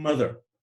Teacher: in order to pronounce that M sound we keep our mouths closed and the air is exiting our body by way of the nose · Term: nasal consonant